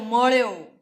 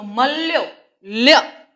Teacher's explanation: તો ત્યાં થડકો આવતો નથી તેમ મૃદુતા આવી જાય છે તો અળ એ થડકાર વગરનો પાર્શ્વિક છે જ્યારે લ એ થડકાર વાળું પાર્શ્વિક વ્યંજન છે